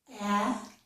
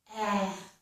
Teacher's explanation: For this sound, my lips are rather spread, A, my mouth is open wide, well, pretty wide, A, and spread, A, A. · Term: A sound